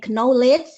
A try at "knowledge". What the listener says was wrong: This is not knowledge but knowledge. K-nya nggak dibaca. Knowledge.